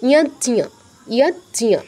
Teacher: তো এখানে আপনার বর্গীয় জ হসন্ত আছে মানে বর্গীয় জ অর্ধ উচ্চারণ, অটা উচ্চারণ হবে না, জাস্ট টাচ, আর ঞ পূর্ণ উচ্চারণ।